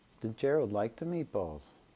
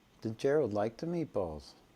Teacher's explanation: the last rise and fall is across the final noun phrase as opposed to the final syllable · note that the final fall is below the intonational baseline.